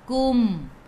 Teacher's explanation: Mim ada sukun, jelaskan mim izhar syafawi.